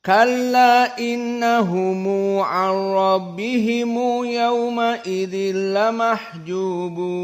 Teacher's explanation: Dan Abu Ja'far serta Ibnu Katsir dan Ya'qub maka dibaca dalam keadaan qasr al-munfasil. Namun perbedaannya Abu Ja'far dan Ibnu Katsir dalam keadaan ditambah silatul mim al-jama'